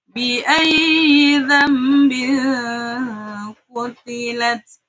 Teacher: Mungkin penulisannya bi ayyi dzambin, akan tetapi bacanya bi ayyi dzambin qutilat. Nun sukunnya diubah menjadi suara mim. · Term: iklab